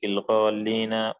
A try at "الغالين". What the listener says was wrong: غالين. قال بشدة اللام नहीं है لام बगैर शद्दा के।